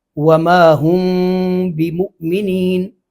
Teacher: ہم نہیں کہنا، ہلکے سے ہونٹ آپس میں ملیں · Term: اخفا